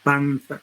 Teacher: Esa nasal en panza es interdental. ¿Por qué? Porque se produce, en este caso, con obstrucción de los incisivos, ambos incisivos, más el ápice de la lengua, ¿no?